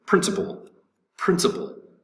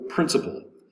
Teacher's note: principle has the accent over the first syllable